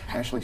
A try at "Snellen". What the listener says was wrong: No H. Snellen. There we go.